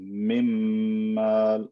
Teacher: into the meme again with tanween i don't say hi min i take the n sound i merge it into the m · I take the noon and I merge it into the mim. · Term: idgham